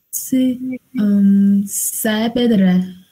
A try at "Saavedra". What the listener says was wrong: Saavedra. No tenemos sa, sino Saavedra. Tú tienes que pronunciar muy claramente.